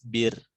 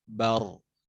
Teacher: Terus ro kalau tebal, belakang lidahnya diangkat.